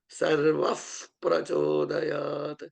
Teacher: And then when it is followed by a Pa sound, like Dhiyo Yo Naf Prachodayat, when a Visarga is followed by a Pa sound or a P sound, the Visarga becomes F-like sound